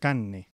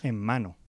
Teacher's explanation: When the rhotic sound occurs before the sounds n, m, or l, it's omitted and the following consonant is doubled. For example, the word for meat, carne, becomes carne. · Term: elision of the rhotic consonant